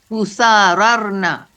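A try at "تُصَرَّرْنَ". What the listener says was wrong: Nah, begitu. Tusaror, bukan tusarir ya.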